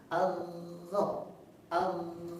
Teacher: Jadi lidahnya naik suaranya tebal.